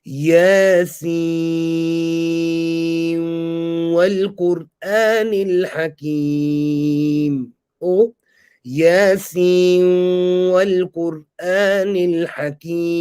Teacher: doing the idgham of the noon into the waw